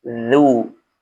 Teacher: Huruf zal pastikan lidah kita menyentuh gigi seri bagian atas.